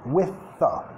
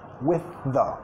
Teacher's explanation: TH muda a TH sonora